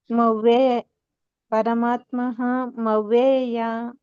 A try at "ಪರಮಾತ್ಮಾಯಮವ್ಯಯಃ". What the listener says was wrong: ಇಲ್ಲ, ಅಲ್ಲಿ ಹ ಬರ್ತಾ ಇಲ್ಲ ನಿಮ್ದು. ಪರಮಾತ್ಮಾಯ ಮವ್ಯಯ ಯಯ ಅಂತ ಹೇಳ್ತಾ ಇದ್ರ.